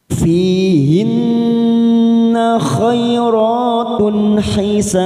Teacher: ada kasroh yang bertemu ya sukun, dua harokat kita panjangkan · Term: mad tabi'i